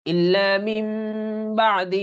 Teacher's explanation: এই নুনটা মিম হয়ে গেছে নুনটা মিম হয়ে যাবে